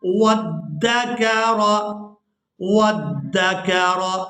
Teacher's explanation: तो ऐसा नहीं यहाँ पर करना, क्योंकि यहाँ पर हमने वाओ को दाल मुशद्दद के साथ मिला देना है। इस अलिफ मद्दा की वजह से वाओ को खींचकर अदा नहीं करना।